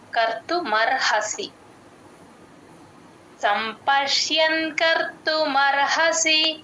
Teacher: సంపష్యన్ ఆ య క్లియర్ గా వినిపించాలి యన్ అని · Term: య వత్తు